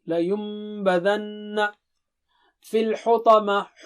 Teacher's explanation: لینبذن، نون میم سے بدل رہا ہے، وہاں پر غنہ ہوگا